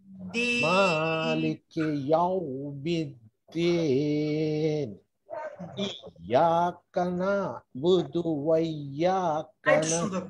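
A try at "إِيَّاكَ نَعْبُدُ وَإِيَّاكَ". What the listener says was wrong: আরেকটু সুন্দর করে আরেকটু টানতে হ্যাঁ ইয়াকা না'বুদু বলেন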